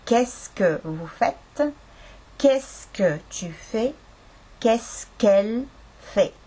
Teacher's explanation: Nii et see on que, est-ce tegelikult, aga kuna siis est-ce algab täishäälikuga, siis sealt vahepealt que täishäälik lõpust kaob ära.